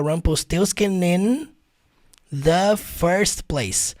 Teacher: Aí você junta o Rumpelstiltskin com in, vai ficar Rumpelstiltskin in the first place.